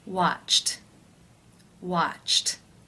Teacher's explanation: ch that is an unvoiced consonant sound therefore it is case one where the e d is pronounced as the t sound watched watched how do you pronounce this word the final sound